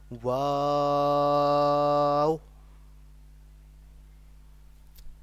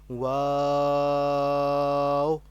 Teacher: واو کو دراصل ایسا پڑھنا ہوتا ہے کہ جو شروع والا، یہاں پر آپ دیکھ سکتے ہیں کہ واو کے سپیلنگز میں دیکھیں تو یہاں پر آپ دیکھیں کہ دو واو لکھے ہوئے ہیں. تو جو شروع والا واو ہے ہم اسے لمبا کر کے دوسرے واو کے ساتھ ملاتے ہیں